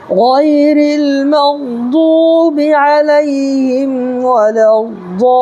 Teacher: دیکھیے قاعدہ کیا ہے، یا ساکن ہے، یا ساکنی سے پہلے زبر ہو تو یالین ہوگا، اس کو نرمی کے ساتھ ادا کرنا ہے، اور را کے نیچے زیر ہے تو را کو ہم باریک پڑھیں گے، ٹھیک ہے۔ اور دیکھیے واو ساکن سے پہلے ضاد کے اوپر پیش ہے تو واو مدہ ہوگا، واو مدہ کو ایک الف برابر کھینچ کر کے پڑھیں گے اور ایک الف کی مقدار یعنی 1 سیکنڈ کھینچ کر کے پڑھنا ہے۔